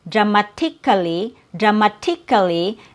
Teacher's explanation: So the T here doesn't have a T sound. It has a fast D sound in the American accent. So instead of saying dramatically dramatically, there's no T sound.